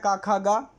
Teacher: क वर्ग कंठ से निकलता है